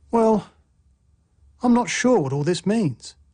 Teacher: a full rising tone expresses uncertainty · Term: fall rising tone